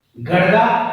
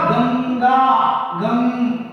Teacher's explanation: nasal यानी वे वर्ण जिन वर्णों का उच्चारण करते समय हमारे मुख विवर में निर्बाध स्थिति तो नहीं होगी, परंतु हमारे नाक के दोनों नथुनों में एक कंपन होगा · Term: नासिकीय वर्ण